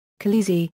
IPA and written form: ˈxa.l̪e.e.si (khaleesi)